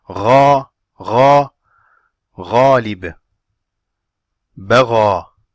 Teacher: there's an elevation at the back part of the tongue while pronouncing harful ghain.